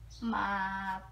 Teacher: the third tone as it falls and then it rises again